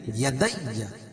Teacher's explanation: یدی یہاں پر تشدید ہے تو دال کو یا میں سختی کے ساتھ ملائیں گے